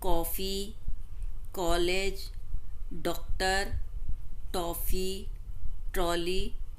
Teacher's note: इसका उच्चारण आ तथा ओ के मध्य का प्रतीत होता है। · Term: आगत ध्वनि